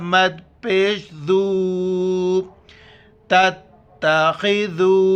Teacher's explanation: کی وجہ سختی سے پڑھیں گے، خو کو موٹا کریں گے، ذال کے وقت زبان باہر نکالنا ہے ، اور یہاں پر مد ہے، مد 4 الف کی مقدار